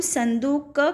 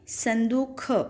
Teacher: बघेली की विशेषता यहाँ पर दी गई है कि इसमें अल्पप्राण जो व्यंजन होते हैं वो महाप्राण हो जाते हैं, मतलब महाप्राण जैसे बोले जाते हैं।